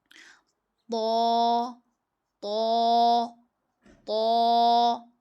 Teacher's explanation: जुबान की नोक जब सामने वाले दो दांतों की जड़ से लगे तो उससे त अदा होता है। जुबान की नोक है और यह सामने के जो दो दांत है उनकी जड़ से लग रही है।